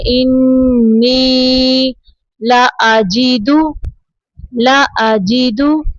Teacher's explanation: یا ساکن کے پیچھے زیر ہے یا مدہ، 2 سیکنڈ تک اس کو لمبا کریں گے